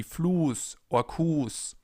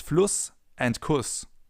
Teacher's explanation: The sound they make is the same, but it all comes down to the length of the vowel preceding the sharp S or the double S.